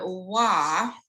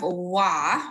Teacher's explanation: If you think about the sound wa, the a becomes more rounded, and it sounds more like, you know, what we would think of as a short o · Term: co-articulation